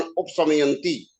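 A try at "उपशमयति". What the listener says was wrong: जी, शमयंती नहीं है, शमयति।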